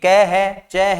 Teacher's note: Ka और Cha, दोनों ही अघोष हैं।